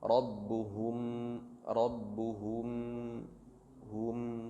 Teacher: Cara bacanya rabbuhum, ba maju, ha maju. Penahanan di mim sukun bertemu dengan ba itu dimundurkan.